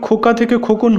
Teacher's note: শব্দের শেষে একটি নতুন ধ্বনির আগমন হয়েছে, সেটি হচ্ছে দন্তন্য ব্যঞ্জন ধ্বনি, তাই এটি অন্ত ব্যঞ্জনাগম।